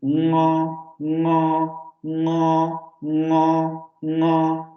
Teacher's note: un fonema velar nasal que es muy similar al del inglés